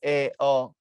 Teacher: নিম্ন মধ্য এ অ নিচে থাকে জিব মাঝামাঝি থাকে